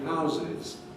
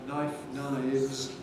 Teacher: So it's like knife, knives, in that it's got a fricative that switches voicing when we have the plural ending